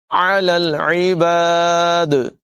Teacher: دال حرف قلقلہ میں سے ہے، ساکن ہو جائے گا تو قلقلہ جو ہے یہ خوب نمایاں ہوگا، آواز جو ہے یہ ٹکراتی ہوئی محسوس ہوگی۔ علی العباد، عین کی آواز دونوں جگہوں پر نمایاں کریں گے۔